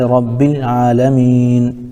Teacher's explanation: عالمین، نون چونکہ آخری حرف ہے، اس لیے اس پر ہم وقف کریں گے، آیت کی وجہ سے وقف کریں گے، وقف کرنے کی وجہ سے نون ساکن ہوگا، جیسے رب العالمین۔